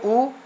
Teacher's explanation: उ कहते समय देखिए हमारा मुंह गोल हो गया ना, ओठ का काम हो रहा है